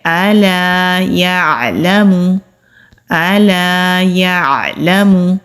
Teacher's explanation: आईन है ये हलक के दरमियान से अदा होता है इसको हमजा की तरह नहीं पढ़ा जाएगा लाम के ऊपर जबर · یا عین حلق کے درمیان سے ادا ہوگا · لام کے اوپر زبر ہے، لام کو کھینچنا نہیں ہے، کیونکہ لام کے اوپر اگر زبر ہو تو بہت سے لوگ لام کو کھینچ کر پڑھتے ہیں، یہ بھی بہت بڑی غلطی ہوتی ہے، اس سے بچنے کی کوشش کرنی ہے۔